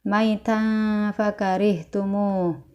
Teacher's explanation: dibaca dengung dan ditahan tiga harakat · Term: ikhfa